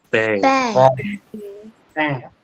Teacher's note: tongue to the valum okay repat after me 10 bang bang so it is not your tip of your tongue in front but it is at the back of your tongue